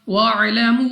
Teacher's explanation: वाउ साकिन से पहले पेश वाउ मद्दा, मगर इसके ऊपर है मद तो हमने इसको 2 नहीं बल्कि 3 या 4 सेकंड तक खींच कर पढ़ना होगा।